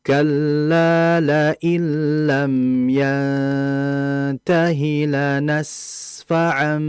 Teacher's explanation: H sepertinya dia ingin mempersiapkan fnya. Cuman harusnya yang betul adalah sinnya tetap dialirkan terlebih dahulu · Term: rikhawah